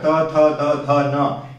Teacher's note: त वर्ग का उच्चारण स्थान दंत है, दांत, पीछे के दांतों को जीभ का अग्र भाग स्पर्श करता है। तो इस यही कारण है कि इन सारे वर्ण जो ये पांच वर्ण हैं, पांच अक्षर त थ द ध न, इन पांचों का उच्चारण स्थान दंत है या दांत है।